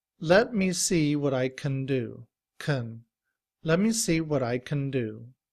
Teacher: In reduced form, we don't say can. Rather, the A sound becomes the schwa